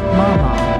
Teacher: The third tone dips down and then up